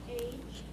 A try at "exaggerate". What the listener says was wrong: That's a short A. Just a short A instead of a long A. You said long A, but it's short A. Adj. Cover up everything but ER. Cover up everything but the last four letters. So X, Adj, Eight.